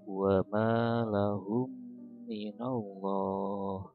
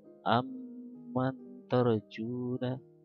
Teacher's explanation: Jadi ketika ada dua mim, pertama sukun, keduanya hidup, bertemu, maka seolah-olah mim yang pertama tidak dibaca, langsung ke mim kedua, tapi dengan seperti ada tasdid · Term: idgham mimi